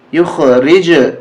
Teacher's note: آواز ٹکرا کر آئے گی واپس، دو دفعہ گویا جیم نکلے گی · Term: قلقلہ